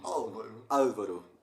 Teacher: Na verdade, esse L aqui era o que eles chamam em inglês de Dark L.